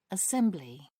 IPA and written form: əˈsɛmblɪ (assembly)